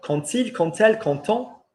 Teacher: quand plus a vowel, quand il, quand elle, quand on is still when, but you pronounce it with a T